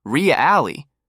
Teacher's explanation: When they're shocked, the tone jumps high, "Really?" But when they're doubtful, it slides downward, "Really?" The same word, completely different emotion.